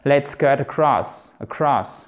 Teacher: vous aurez même tendance à ne presque pas entendre la première voyelle parce que l'accentuation, elle se fait ici en fait.